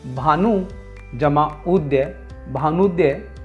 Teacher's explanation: जब हम भानुदय शब्द का वर्ण विच्छेद करते हैं तो भानु शब्द की अंतिम ध्वनि उ तथा उदय शब्द की पहली ध्वनि उ, यह दोनों छोटे उ की ध्वनियाँ मिलकर उ बड़े ऊ की ध्वनि का निर्माण करती हैं, जिससे भानुद्य शब्द का निर्माण होता है।